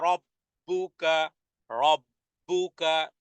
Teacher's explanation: উচ্চারণে বারবার হবে তাকরার হবে জিহ্বার আগা তার বরাবর উপরে তালুর সাথে লাগিয়ে